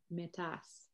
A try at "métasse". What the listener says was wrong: Métasse, yeah.